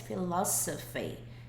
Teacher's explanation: E uma coisa doida dessa palavra é que isso daqui, esse S, ele não tem som de Z, ele tem som de S